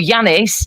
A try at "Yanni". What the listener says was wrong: pronounce the S. S off at the end is Yanni, not Yanis.